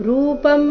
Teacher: अनुस्वार का उच्चारण म की तरह